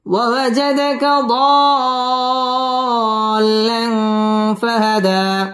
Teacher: ফাহাদা এক আলিফ টান দিয়ে ওয়াকফ করতে হবে